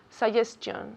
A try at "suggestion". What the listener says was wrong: Not chion. No, chun. Chun. Suggestion. Again?